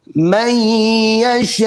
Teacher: so a little abrupt stop, a glottal stop. That's for the letter Hamza.